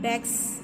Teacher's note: The S, that is the morpheme S, is phonetically Z.